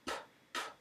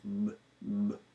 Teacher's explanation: P, P is not voiced. But a B, on the other hand, B, B, is voiced.